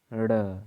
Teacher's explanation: जीभ की नोक उलटकर तालू को कुछ देर छूकर मुख्य द्वार को झटकते से खोलती है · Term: उच्छिप्त